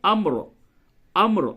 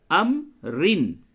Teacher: اور را کو پر کریں گے حالت وقف میں، حالت وصل میں را کو باریک پڑھیں گے